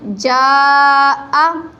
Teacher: اب جو جیم کے اوپر ہے یہ مد منفصل جائز ہے، اس کو ہم 3 الف کی مقدار لمبا کریں گے۔ جیم زبر الف مد جا، حمزہ زبر آ، جا آ۔